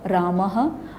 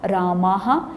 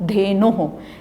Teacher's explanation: जिस भी स्वर के बाद विसर्ग हैं उस स्वर के उच्चारण के बाद उसी ध्वनि के साथ ह का उच्चारण मात्रा सहित होगा। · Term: विसर्ग का उच्चारण